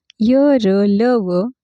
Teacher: य र ल व या व्यंजनांची उच्चार स्थाने इ र उ या स्वरांच्या उच्चार स्थानासारखीच होत असतात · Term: अर्धस्वर